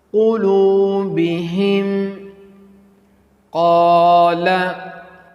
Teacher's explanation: So next letter is Qaf. So pronounce Qaf with bold, heavy and hard voice.